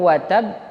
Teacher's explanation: Idgham Bighunnah berarti dia ditahan dan dimasukkan ke hidung idgham itu artinya melebur Apanya yang melebur bunyi huruf n-nya itu